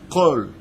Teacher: Et le kouf vient de la gorge.